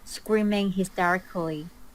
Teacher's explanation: notice how she pronounces everything syllable by syllable